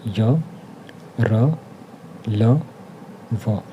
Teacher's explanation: अंतःस्थ जो व्यंजन है इनके उच्चारण में जीभ, तालु, दांत और ओष्ठों का स्पर्श तो होता है लेकिन पूर्ण रूप से नहीं होता है, जिससे हवा बीच से बिना रगड़ खाए निकल जाती है। ये स्वर और व्यंजन के मध्य की ध्वनियाँ होती हैं। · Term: अंतःस्थ व्यंजन